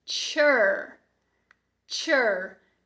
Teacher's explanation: Vamos finalizar no schwa emendado já com R, que é um som de vogal bem fraquinho, Então, esse final aqui vai ser chur.